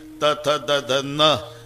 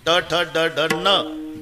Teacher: नळ्याचा न उच्चारा तर जीभ दाताला स्पर्श करणार. बाणाचा न उच्चारा अजिबात दाताला लागत नाही टाळूला.